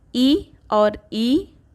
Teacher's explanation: ई और ई का उच्चारण तालु से होता है। यह एक तालव्य ध्वनि है।